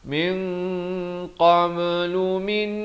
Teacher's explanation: nun mati bertemu nun idgham bi gunnah, dengungkan 2 harakat · Di sini ikhfa hakiki, disamarkan 2 harakat dengan tebal.